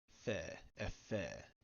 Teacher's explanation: It's normally just a voiceless labiodental fricative